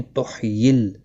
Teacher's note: ہا کو وسط حلق والا ہا ہے